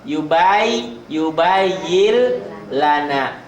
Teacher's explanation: N-nya jadi L double.